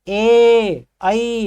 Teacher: ऐसे स्वर जिनका उच्चारण करते समय हमारी जीभ आगे जाती है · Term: अग्र स्वर